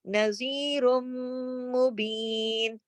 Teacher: क्योंकि रा दो पेश की तनवीन के बाद मीम मुशद्दद आ गया, तो इधर इदगाम भी हो रहा है, गुन्ना भी हो रहा है। नज़ीरुम, ये जो आवाज है ये गुन्ने की आवाज भी है और रा की आवाज मीम में जाकर मिल रही है